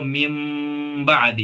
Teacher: नून की आवाज जो है वो मीम में बदल गई है, मुनकलिब हो गई है, पलट गई है। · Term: इकलाब